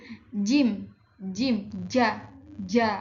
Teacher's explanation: Jim, nah masdud antara letupan dan geseran. Dan dia tuh majhur, dia bergetar ketika mengeluarkan huruf jim itu. Jim, jim, ja, adanya getaran.